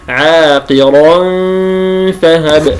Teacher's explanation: مخرج الفاء من باطن الشفة السفلى مع أطراف الثنايا العليا، فأقرأ عاقرا فهب. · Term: الإخفاء